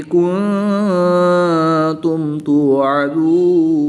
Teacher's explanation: نون ساکن کے بعد تا حروف اخفا میں سے ہے تو یہاں پر اخفا ہوگا یعنی غنہ زمانی کر کے پڑھیں گے